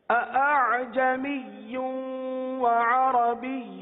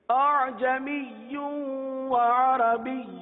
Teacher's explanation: پہلی ادائیگی میں دونوں حمزہ تحقیق کے ساتھ ہوئے، جو کہ غلط ہے